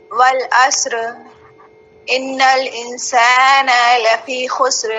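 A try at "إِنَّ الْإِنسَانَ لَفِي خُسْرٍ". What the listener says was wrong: نہیں، نون کو بہت کھینچا ہے. انسان کے نون پر کون سی علامت ہے؟ تو زبر کو کھینچتے ہیں.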